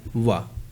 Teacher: तो दांत और ओष्ठ की सहायता से बोला जाता है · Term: दंतोष्ठ